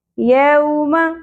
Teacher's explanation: واو ساکن حرف لین، میم کی زبر زیادہ نہیں کھینچی جائے گی